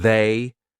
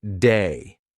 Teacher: The voiced TH, lots of English learners will pronounce it like a D. So instead of saying they, they'll say something like day.